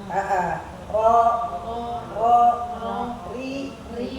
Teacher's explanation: Fathahnya ro kan dia mengarah ke o.